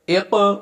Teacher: حمزہ زیر قاف اق، یہ حروف قلقلہ میں سے ہے، لہذا اس پر قلقلہ کریں گے۔